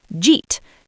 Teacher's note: consonant to vowel linking. We smash the J and the eat together.